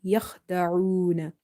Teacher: So it's just amanu wama yakhda'una. Yakh kha is again with a certain irritation from the top of your throat as well as it's from the heavy letters. So make it heavy.